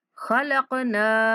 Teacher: قاف پر کلکلا کریں گے